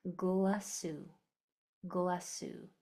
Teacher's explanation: when I bring these two parts together, those two S sounds are going to combine into one